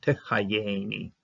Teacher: So the first time around, the Yod finishes off this syllable, and then it also opens up the next syllable. Anytime you have a dagish, you're going to be using it to open the next syllable.